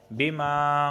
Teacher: بما الف سے پہلے زبر آیا ہے اس وجہ سے میں اسے کھینچ رہا ہوں